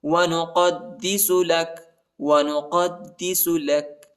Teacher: قاف کو دال کے ساتھ ملائیں گے اور دال کو شدت کے ساتھ پڑھنا ہے، سختی کے ساتھ